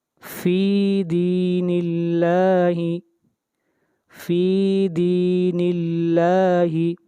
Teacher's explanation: آگے چلیے، فی دین اللہ، فی دین اللہ، یہاں دیکھیں ہم نے اللہ تعالیٰ کے نام کو باریک پڑھا، اس لیے کہ اللہ کے نام سے پہلے زیر آ رہی ہے، اس لیے اللہ کے نام میں تفخیم نہیں ہوگی، ترقیق ہوگی، یعنی اللہ کے نام کو باریک پڑھا جائے گا